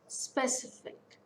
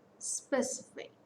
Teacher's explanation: So it's a 3-syllable word. Stress falls on second syllable.